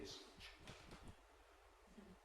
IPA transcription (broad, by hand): ʤ